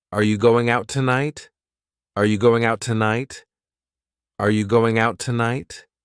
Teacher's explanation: is quite clear notice how we can combine out tonight together when I say out I'm not going to pronounce that t out the t is just silent